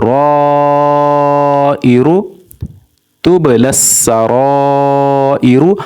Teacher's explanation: اب را کے اوپر زبر ہے، را موٹی پڑی جائے گی